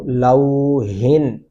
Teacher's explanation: موٹا ہا نہیں پڑھیں گے، یہ باریک ہا ہے